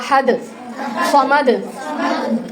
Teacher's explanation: حروف قلقلہ میں سے حرف دال آ رہی ہے، تو اس حرف کے اوپر جب وہ سکون دیں گے تو قلقلہ ہوگا. وقف کریں گے تو جیسے احد، صمد.